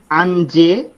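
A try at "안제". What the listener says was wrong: না, স্বরবর্ণটা আছে কেন? স্বরবর্ণ আছে অ, অঞ্জে।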